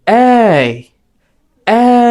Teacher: যখন আমি এই বলবো তখন গলার সুরটা উপর থেকে নিচে নামবে।